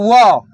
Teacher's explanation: केवल व एक ऐसा वर्ण है जिसका उच्चारण जो है दंत और ओष्ठ की सहायता से होते हैं। लिखिए व, इसका उच्चारण स्थान, इसका उच्चारण स्थान दंत ओष्ठ, दंत ओष्ठ ई ओष्ठ ठ होता है, ओष्ठ।